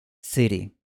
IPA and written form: sɪɾi (city)